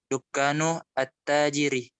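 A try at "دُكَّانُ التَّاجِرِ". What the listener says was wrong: Coba disambung, jangan diputus coba.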